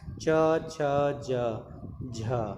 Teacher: च वर्ग। अब देखिए, च वर्ग का उच्चारण स्थान जो है वह तालव्य है